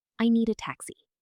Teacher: A beginner often says, I need a taxi. But a native speaker connects the D in need directly to the A. It sounds like one word, Nita. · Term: connected speech